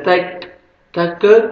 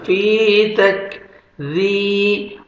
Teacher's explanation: ساکن سے پہلے کسرہ، فا کو اپنے 1 سیکنڈ کھینچنا ہے، کاف کو باریک پڑھیں گے، کاف کا لائٹ سے ساؤنڈ آئے گا، ڈبل ساؤنڈ نہیں آئے گا